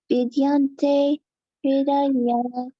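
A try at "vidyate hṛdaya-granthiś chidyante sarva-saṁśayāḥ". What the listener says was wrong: The first one doesn't have an N in it. Yeah, vidyate.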